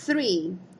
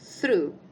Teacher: Que é a língua entre os dentes, soltando aí um ventinho